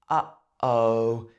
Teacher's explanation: it sounds like your voice is getting cut off in the middle and then continuing · Well, it's because of the glottis. You stop the air flowing through the glottis in your throat. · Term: glottal stop